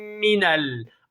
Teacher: Arkadaşlar iki tane harf gelmiş Mim cezim ile normal harekeli Mim ikisini birbirine katıp geniz harfi de olduğu için idamı misle olacak